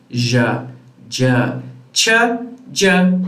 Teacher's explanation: they are a mixture between plosive and fricative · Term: affricate sounds